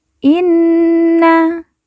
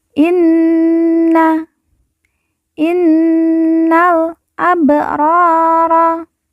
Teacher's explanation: Nun yang bertasydid ditekan, ditahan 2 harokat dan didengungkan.